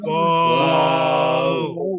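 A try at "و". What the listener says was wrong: না না না, ঠোঁট তো স্বাভাবিক হচ্ছে না, ঠোঁট গোলই রয়ে যাচ্ছে, গোল থাকবে না। আচ্ছা, আমরা অর্ধেক অংশ উচ্চারণ করি। ওয়া বলেন তো, ওয়া ওয়া ওয়া ওয়া এই টান দিয়ে আমরা নর্মাল করে ফেলবো ঠোঁট। ওয়া, জি, নর্মাল করে তারপরে লম্বা করব।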